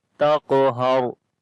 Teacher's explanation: On the qaf we make a heavy sound, and also we make qalqala. This is weak qalqala. And on the ra we read in heavy sound as well, because ra has a sukoon sign and there is fatha on the before letter, so this ra will be heavy.